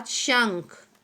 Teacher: अंग को अनुस्वार कहते हैं. इसका उच्चारण नाक से होता है